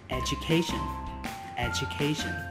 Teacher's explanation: các bạn cũng nhấn trọng âm vào âm A. Âm tiết thứ 3, education, education.